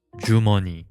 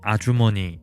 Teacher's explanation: the affricate is voiceless, whereas in ajumoni, meaning ma'am, the affricate becomes voiced because it appears in between vowel sounds, namely a and u.